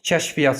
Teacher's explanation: K, ə, ş, f, i, y, y, a, t. Kəşfiyyat sözündə yə biri düşəcək. K, ə, ş, v.